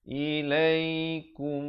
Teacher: izhar syafawi, bunyi saja kum, jangan panjang, terus masuk.